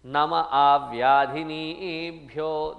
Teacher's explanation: Nama avyadhinibhyo, nama, actually it is namaha. But when namaha is followed by a, which is a vowel, that ha drops.